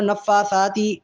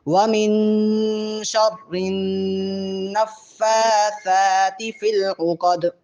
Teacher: اس کو نفاثاتی ایسے نہیں پڑھ کے فا کو بھی کھینچیں گے، لمبا کریں گے، 1 سے 1.5 سے 2 الف کے برابر، اور سا کو بھی